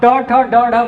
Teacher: आपकी जीभ जो है वो मुड़कर पहले मुर्धन्य को छुए गी ठीक है ये ऊपर का भाग मुर्धन्य कहलाता है तो ये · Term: उत्क्षिप्त